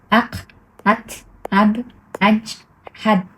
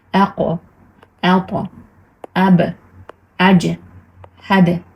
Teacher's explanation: bo'lsak shunchaki aq aq at ab aj had deb o'qib qo'ymaymiz a qalqala bilan o'qigan uchurda mana shu tamg'alarni titratib bosim qilgan holda o'qiymiz aqo ato abo ajo hado deb o'qiymiz endi bu a tushunarli